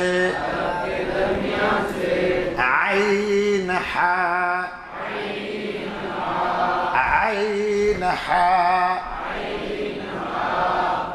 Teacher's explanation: हलक के दरमियान से आइन हा